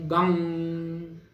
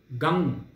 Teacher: ओम गंग अनुनासिक आहे. गंग गंग म्हणताना आपल्याला नाद जाणवला पाहिजे. गंग आधी ओंकार मग ग वरती अनुस्वार आणि तो नुसता अनुस्वार नाही, तो अर्धेंदुलसितमय अर्धचंद्राकृती अर्धचंद्राकार असा अनुस्वार आहे.